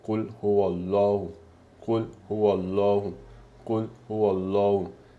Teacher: abbiamo il Fatah, quindi rendiamo Allah, rendiamo la pronuncia forte. Quindi abbiamo Qul huwallahu, Qul huwallahu, Qul huwallahu.